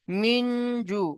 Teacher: মিনজু, নুন সাকিনের পরে জিম এসেছে, হুরুফে ইকফা 15টি অক্ষরের মধ্যে জিম আছে, তো সেই জিম একটি নুন সাকিনের পরে এসেছে, তাই নুন সাকিনের আওয়াজকে নাকে তুলে একালি পরিমাণ গুণনা করে পড়তে হয়। তাহলে এখানেও একালি পরিমাণ গুণনা হবে।